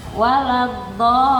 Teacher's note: Lagunya betul, tapi kepanjangan dia dilamakannya di lam tasdid itu.